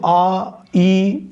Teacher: मात्रा की दृष्टि से दीर्घ स्वर को द्विमात्रिक स्वर कहलाते हैं, अर्थात दो मात्रा वाले स्वर। और दो मात्रा होने के कारण ही इसका उच्चारण ह्रस्व से दुगना समय लगता है। जैसे आ, बड़ा आ को हम पढ़ेंगे तो आ, ई, इसमें दुगना समय लगता है।